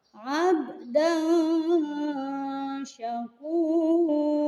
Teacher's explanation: Yang keempat, ada contoh abdan syakura. Di sana terdapat tanwin menghadapi shin, maka tanwin tersebut harus dibaca samar-samar, tidak boleh jelas karena hukum bacaannya adalah ikhfa.